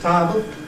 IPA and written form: ˈtaːbl (Table)